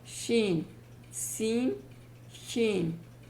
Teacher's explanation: MAKHRIJ is from middle of the tongue, touches the upper hard part of the roof of our mouth, so that is the place.